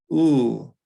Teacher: That is a high back vowel like oo, but when we say oo, our lips are round. This is the non-round version. So this is ooh.